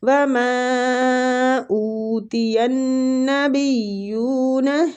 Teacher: وَمَا پہ جو مد ہے یہ بھی مد جائز منفصل ہو رہی ہے، تو اس کے کھینچنے کی مقدار بھی 3 حرکات ہے